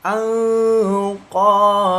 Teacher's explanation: Nun sukun bertemu dengan huruf qaf termasuk hukum bacaan ikfa disamarkan membacanya dua ketukan ya kemudian didengungkan.